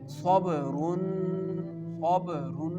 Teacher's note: So, you can pronounce it like khabarun khabarun. When we pronounce the tanween, the noon sound will pronounce, and it will go in our nose.